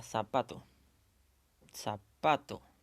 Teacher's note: te das cuenta de la mayor fuerza de voz está en la sílaba pa está aquí entonces esta sería la sílaba tónica la sílaba pa